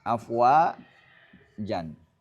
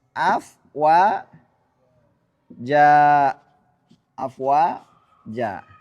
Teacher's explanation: mengganti fathatain atau tanwin fathah ketika waqaf dengan alif yang dipanjangkan 2 harokat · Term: mat iwad